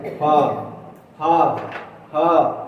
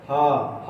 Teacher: हा हा हा, ध्यान दीजिएगा, ऐसा लग रहा है कि कंठ से, गले से रगड़ के आवाज निकल रही है। इसमें आपके मुंह में किसी भी भाग का कोई स्पर्श नहीं हो रहा है। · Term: स्वर यंत्रीय